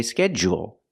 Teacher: the D changes to a j sound like juice and jump